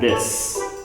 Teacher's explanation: Even though both words are spelled with an S, one sounds like an S and one sounds like a Z. So if you're talking about the singular, this, it's the short I with an S sound